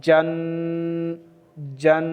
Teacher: تنوین والے حرف کی آواز کو ناک میں چھپانا ہے